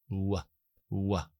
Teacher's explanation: que es la w que interactúa en dos zonas la zona velar atrás y los labios